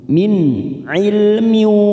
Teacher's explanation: min nun sukun bertemu ain, namanya idhar halki, kita baca jelas tanpa mendengung